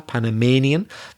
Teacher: That's stressing the third syllable